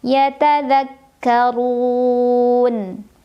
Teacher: La'allahum yatadzakkarun. Ra-nya dibunyikan secara tafkhim karena ra berbaris dan barisnya dhammah. Maka bacanya tebal, dibunyikan dengan cara mengangkat pangkal lidah kita. · Mad arid li sukun. Karena ada mad tabi'i bertemu dengan huruf yang disukunkan karena waqaf. Mad tabi'inya waw sukun sebelumnya dhammah, huruf yang disukunkannya nun.